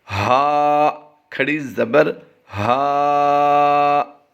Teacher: ہا، کھڑی زبر ہا، یعنی اسے لمبا بھی کیا ہے، حلق کے نیچے والے حصے سے بھی ادا کیا ہے